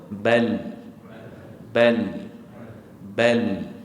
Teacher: akan lalu dan dia akan dia akan melalui kanan dan kiri Ini dipanggil sifat inhiraf iaitu lencongan suara pada ketika menyebut huruf lam sekali lagi sebut Bal Bal bal hujung lidah tadi rasa tak